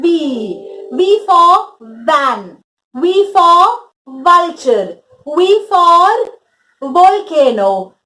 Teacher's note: now the trick to remember the sound of we would be your upper teeth should touch your lower lip when you say the sound of we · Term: sound of v